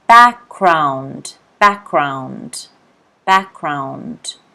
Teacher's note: The stress is on the first syllable, background.